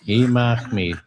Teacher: R is the ch sound, like you have something in your throat